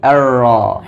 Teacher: pada kata Arrahman di sini ada huruf ro bertasdik dan fathah maka dibaca dengan tebal dan hati-hati getarannya jangan terlalu banyak r atau hilang sama sekali